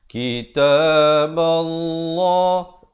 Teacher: Lafzul jalalah di sini dibaca dengan tebal. Jangan baca kitaballah.